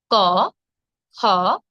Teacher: জীভের একদম গোড়া আগার জীভের একদম যেখান থেকে জীব শুরু হচ্ছে জীভের গোড়া এবং কন্ঠ এখানে কাজ করে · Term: কণ্ঠ ধ্বনি